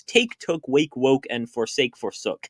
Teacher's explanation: the past tense is somehow lengthened and raised back into a long O